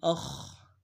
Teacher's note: حمزہ کو خا کے سامنے لانا ہے، خا کو موٹا ادا کریں گے۔